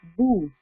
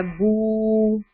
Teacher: با کا پیش کے ساتھ یا ضمہ کے ساتھ ایکچوئل ساؤنڈ کیا ہے, با ضمہ بو, با پیش بو, لیکن آگے واو لگ گیا ہے تو لمبا کرنا پڑ رہا ہے